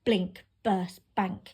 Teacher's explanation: we've got this alliteration of the plosive B sound. It's a very sharp sound.